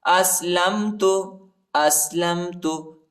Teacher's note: حمزہ کو سین کے ساتھ ملائیں گے، لام کو میم کے ساتھ ملائیں گے.